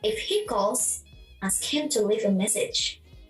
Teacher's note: The tone rises in the first clause and falls gradually in the second clause.